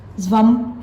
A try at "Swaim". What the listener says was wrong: Actually, it's pronounced Swaim. Well, the V is a W.